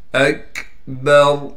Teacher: حمزہ کو کاف سے ملائیں گے اس لیے کہ کاف ساکن ہے، کاف کو باریک کر کے پڑھیں گے اور را وقف کی حالت میں موٹی پڑھی جائے گی